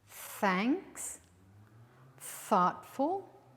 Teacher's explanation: you bite your tongue a little and then you hear a little hiss